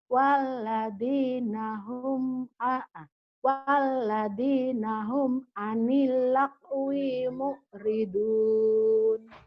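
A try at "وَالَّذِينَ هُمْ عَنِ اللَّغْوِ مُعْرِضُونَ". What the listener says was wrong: Walladzina hum anil Jawanya anil lakwi, jangan lakwi, lagwi. Anil lagwi mu'ridun.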